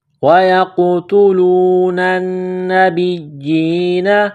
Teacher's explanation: وَيَقْتُلُونَ النَّبِيِّينَ، وَيَقْتُلُونَ النَّبِيِّينَ، یا کو قاف کے ساتھ ملانا ہے، قاف ساکن ہے تو یہاں پر قلقلہ کریں گے